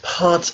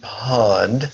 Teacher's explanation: If you have problems with pot versus pod, remember that pot, the T sound you make with the tip of your tongue, the D sound you make with the center of your tongue